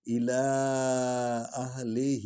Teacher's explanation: ہی کو لمبا کریں گے، الا کو بھی لمبا کریں گے، اس پر مد ہے